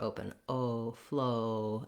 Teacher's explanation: the vowel quadrangle we have the o is kind of central my jaw is somewhat open oh flow and my lips are quite rounded